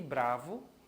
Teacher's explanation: E aí eu tenho Bra, o A, como a vogal tônica.